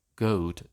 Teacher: the onset of the goat vowel gets centralized as in RP. It becomes a schwa, giving goat in SSB and goat in RP.